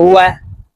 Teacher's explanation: ওয়াও হরফ ঠোঁট গোল করে দুই ঠোঁটের মাঝে ফাঁকা রেখে উচ্চারণ করতে হবে